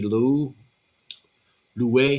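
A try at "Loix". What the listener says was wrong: There's no U. It's just Lua.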